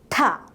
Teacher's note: the release is followed by an extra puff of air